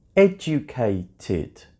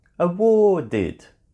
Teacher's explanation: when the original verb already finished with a t sound or a d sound, when we add ed, ed sounds like tid or did.